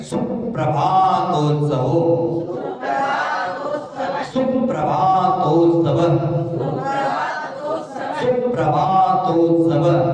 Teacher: देखो ध्यान देना है दीर्घ ह्रस्व का, सु दीर्घ नहीं करना है।